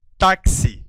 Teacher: esse X tem um som de de KS Então são dois sons e não apenas um eu tenho cinco sons cinco fonemas pois aqui há um dífono